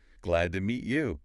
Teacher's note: Where's the stress? Usually on glad and meet.